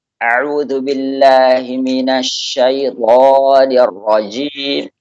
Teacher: Semuanya seolah-olah dikeluarkan dari tenggorokan. Ya, ada tekanan berlebih pada tenggorokan.